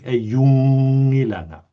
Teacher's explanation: And make sure not to round your vowels to an O sound. U is oo, a narrow sound in Greenlandic.